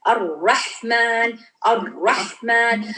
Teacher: Okay, trilling है but you don't do trilling. हल्का सा ट्रिलिंग का आ जाता है. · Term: ट्रिलिंग साउंड